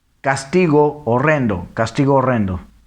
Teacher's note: Todo esto por la cuestión del el hiato, ¿no? Si hay una vocal y luego la siguiente palabra comienza con H, pero luego sigue la vocal con la que terminó la anterior, se une. Recordemos que la H es muda.